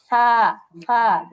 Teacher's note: যেরকম সা যখন আমরা বলবো, জিহ্বার আগা সামনের উপরের দুই দাঁতের আগার সঙ্গে লাগবে